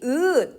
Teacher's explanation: 으라고 하는 발음을 여러분 해 보시면 입술의 모양이 으 찢어져서 평평해집니다. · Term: 평순 모음